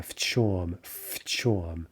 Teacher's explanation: The assimilation, the devoicing of the v, в чем. Right, sounds more like an F.